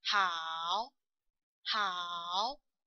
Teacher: the third tone actually have two parts. First is the falling part, then the rising part